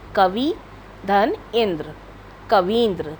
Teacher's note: ह्रस्व ई है जो दूसरे ह्रस्व ई के साथ मिलकर दीर्घ हो जाती है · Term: दीर्घ ई